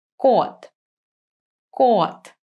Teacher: So, for example, the cat in Russian is pronounced kot. Can you hear that my k has less air coming out from my mouth if I compare it to cat?